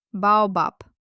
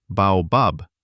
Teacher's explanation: >> You'll be understood, but it will sound with a very heavy foreign accent. A Russian ear naturally expects a soft exhaled pe sound at the end of words.